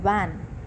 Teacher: the upper teeth is touching the lower lip